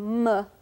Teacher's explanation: Also m, made with two lips. It's a nasal bilabial sound.